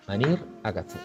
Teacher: en virtud del itacismo, o sea que la E pues suena pues también como I, de hecho se pronuncia como I